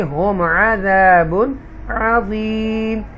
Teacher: یہاں پر میم ساکنہ کے بعد حرف حلقیہ میں سے ہے، اس کو ہم کلیئر پڑھیں گے